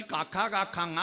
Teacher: കണ്ഠത്തിൽ കാക്ക കാക്കാങ്ങ വ്യഞ്ജിപ്പിക്കുന്നത് കണ്ഠ്യം